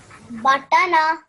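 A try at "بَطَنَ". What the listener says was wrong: Well done. MashaAllah, you tried really, really well.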